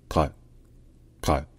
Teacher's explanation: cette lettre se prononce un peu comme un que français mais un que qui est plus profond dans la gorge en fait un que qui a l'emplacement du R français